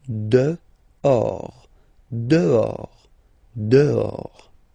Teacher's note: Okay, so remember, final S not pronounced, and then this H in French doesn't exist phonetically, so you don't pronounce it